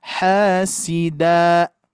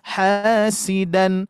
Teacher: ketika diwakafkan jadi dua harakat hasida tuh Bu ya beda ya yang asalnya dan menjadi da